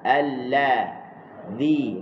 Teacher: Lepas tu er huruf lam sat ni dia temu dengan zal. Huruf zal hujung lidah kita letak di hujung gigi atas